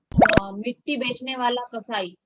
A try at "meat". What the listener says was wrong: मीट बेचने वाला. मीट, मिट्टी नहीं है, मीट. MEAT, मीट.